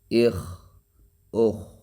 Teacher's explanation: خا موٹا حرف ہے مگر قلقلہ نہیں ہوگا